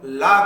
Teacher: देखिए जब हम ला का उच्चारण करते हैं तो हमारी जीवा ऊपर उठ जाती है, जिसके कारण हमारे मुख से वायु बाहर आने के लिए जो मार्ग होता है वह बंद हो जाता है, किंतु वायु जो है जिह्वा के दोनों किनारों को स्पर्श करते हुए बाहर निकल जाती है, जिस कारण इसको हम पार्श्विक व्यंजन कहते हैं।